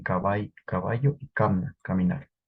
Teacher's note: la a de la sílaba inicial mostró tendencia palatal